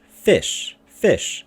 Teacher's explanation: This is a light syllable because the vowel, the I is short, and we have sh sound. So only 1 consonant.